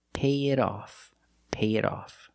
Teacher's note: I have to put it in the middle and say pay it off. Now the T in it is between vowels. So we change it to a fast D and we say pay it off.